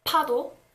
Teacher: the aspirated consonant, which is p-up or pa. This is pretty much the same as the English pa